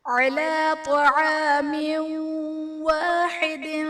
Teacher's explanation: تنوین کے بعد حروف یرملون میں سے واو ہے تو یہاں پر ادغام مع الغنہ کا قاعدہ ہوگا، یعنی تنوین میں ہم غنہ کر کے پڑھیں گے